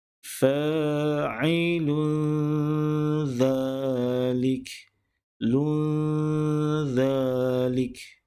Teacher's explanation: Tanwin berbaris 2 hadapan bertemu dengan huruf zal, maka bacaannya perlu didengungkan